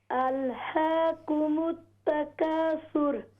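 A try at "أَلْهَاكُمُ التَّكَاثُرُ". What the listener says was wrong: अल्हा, हा ठीक करें। अल्हाकुमुत तकासुर।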